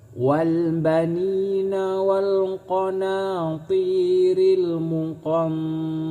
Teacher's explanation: Nun mati bertemu dengan huruf ta, ini disebut ikhfa. Cara membaca ikhfa yaitu dengan cara samar dan berdengung.